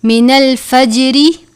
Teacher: جیم ہے حرف قلقلہ میں سے، آواز میں جنبش آنی چاہیے